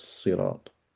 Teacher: to the sin and it becomes a sad so sirat okay the ta affects the sin and it changes the sin to a sad so we get sirat but the ta is also voiced right